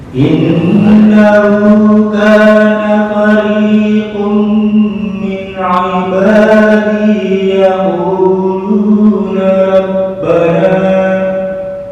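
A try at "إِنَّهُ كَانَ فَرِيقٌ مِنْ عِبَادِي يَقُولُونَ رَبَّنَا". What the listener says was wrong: Kepanjangan dikit. Nah, kalau ketika wakaf kepanjangan hanya 2 harokat. Yaquluna rabbana, titik.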